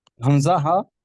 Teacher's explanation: یہ حمزہ ہا حلق کے نیچے والے حصے سے ادا ہوتا ہے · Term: حروف ہلکی